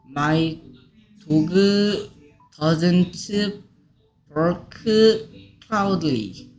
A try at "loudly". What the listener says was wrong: 이게 어떻게 클라우들리야?